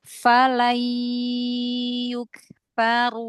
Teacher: Suaranya dibagi ke hidung dengan ke mulutnya dibagi ya